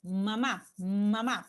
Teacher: parte del aire sale por la nariz como en el caso del sonido mamá mama parte del aire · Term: los nasales